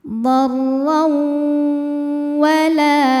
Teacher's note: Lalu berikutnya ada hukum idgham bi gunnah karena ada tanwin fathah menghadapi huruf waw. Maka tanwin dileburkan ke waw disertai bunyi dengung.